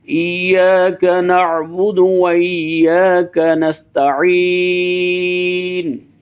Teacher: نع کی عین کو حمزے سے جدا کرنا ہے